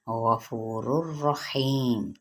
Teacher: لام اور را آ جائیں تنوین کے بعد تو پھر یہاں پہ ادغام بلا غنہ یعنی غنے کے بغیر ہم پڑھیں گے